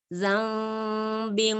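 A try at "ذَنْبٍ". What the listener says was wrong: Lebih tipis. Zam. Zau tebal. Zambi. Zambi.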